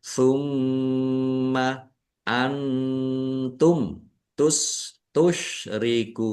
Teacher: Bacaan ikhfa dibaca samar-samar. Mim tasdid dibaca ghunah atau mendengung. Ditahan biar tampak mendengungnya. · Nun sukun bertemu dengan huruf ta. Bacaan ikhfa dibaca samar-samar. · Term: izhar syafawi